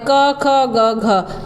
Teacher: घ का उच्चारण स्थान कौन सा है तो कंठ